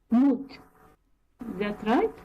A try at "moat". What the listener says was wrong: You need to work on the O sound. Moat. Moat.